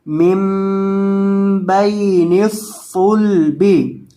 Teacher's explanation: یہ جو صاد ہے اس کے اندر آپ نے سیٹی کی آواز پیدا کر کے پڑھنا ہے اور اس کو موٹا کر کے پڑھنا ہے